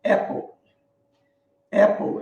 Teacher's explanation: Apple, ela é pronunciada, né, com A meio aberto.